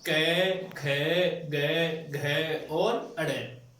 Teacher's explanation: ऐसे वर्ण जिनका उच्चारण कंठ के आधार पर या कंठ से किया जाता है तो उन्हें क्या कहते हैं, कंठव्य कहते हैं।